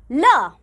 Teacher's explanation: मुंह के दो अंग मिलकर हवा का बीच से निकलने वाला मार्ग रोक लेते हैं और वह इधर-उधर से बाहर निकलती है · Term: पार्श्विक व्यंजन